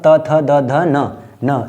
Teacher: त वर्ग में आएगा त, थ, द, ध, न। ये त, थ, द जब भी हम बोलेंगे इन शब्दों को तो हमारी जो जीभ है वो दांत को स्पर्श करती है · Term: दंत वर्ग